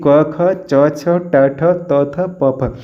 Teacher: जिन वर्णों के उच्चारण में तारत्व या फिर प्रकंपन नहीं होता है उसे हम स अघोष वर्ण कहते हैं। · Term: अप्रकम्पित वर्ण